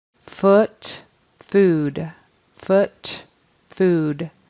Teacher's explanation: he um voiced that final sound and made it a d instead of a t